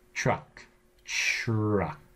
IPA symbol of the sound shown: tʲ